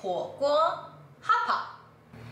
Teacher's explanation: the first character is the third tone which means fire and the second character is the first tone which means a pot